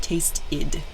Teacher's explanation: in a verb like tasted, it's like an id sound, tasted.